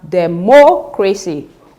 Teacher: Now in the option C we have democracy, which means that we have stressed the antepenultimate syllable, that is the third syllable from the end